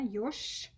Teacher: You see ж, but you hear sh. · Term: devoice